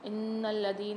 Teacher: نون پر مشدد ہے، غنہ کریں گے اور لام کے ساتھ ملا کے پڑھیں گے نون کو